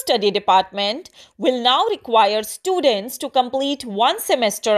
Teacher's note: the bilabial p doesn't have as much air coming out of it